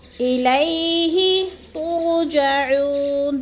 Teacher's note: یلین کو ہم نے لمبا بھی نہیں کرنا اور جھٹکا بھی نہیں دینا